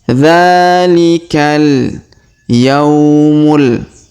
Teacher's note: Kemudian dzalikal, perhatikan huruf dza kita panjangkan 2 harokat karena terdapat alif kecil di atasnya. Dzalikal, huruf ka langsung sambung ke alif lam qamariyah. Dzalikal yaumul.